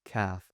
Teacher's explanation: kaf comes from the front of the uvula, up there by the palate of our mouth, by the roof of our mouth, where it is not soft and meaty, but rather it is solid, it is hard